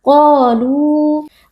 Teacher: Qa huruf tebal kita angkat pangkal lidah, lalu di sini juga ada mad tabi'i karena ada alif yang sebelumnya berharakat fathah. Jadi qa kita baca panjang 2 harakat. Qalu. Lu juga ada mad tabi'i karena ada waw sukun yang sebelumnya berharakat dhammah.